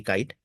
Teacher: a voiceless velar stop with aspiration is found in this kite